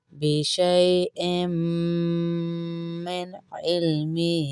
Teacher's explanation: حمزہ کو میم سے ملائیں گے اور غنہ کریں گے